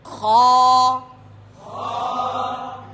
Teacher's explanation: বন্ধুরা, এই হরফটিও মোটা উচ্চারণ হবে, উচ্চারণগত এই হরফটি মোটা। এই উচ্চারণ হচ্ছে হলকের শেষ ভাগ থেকে, শেষ অংশ থেকে, গইন এবং খ।